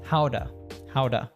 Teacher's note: reduces to a schwa sound so it becomes ta but then because it's a t between two vowel sounds between the uh and the ow of how it becomes howda